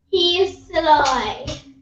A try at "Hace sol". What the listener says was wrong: Remember we said H is silent. She said hace sol. Hace, the word is hace. Hace sol.